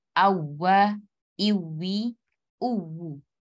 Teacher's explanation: Untuk huruf waw bertasdid, dia memiliki sifat naber. Jadi suara kita harus menaik sedikit ya. Harus naik.